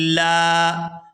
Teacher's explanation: بقرة لا، یہاں تا کو لام مشدد کے ساتھ ملائیں گے، لام جب دوسری دفعہ زبر کے ساتھ پڑھا جائے گا تو یہ کھینچ کر ادا ہوگا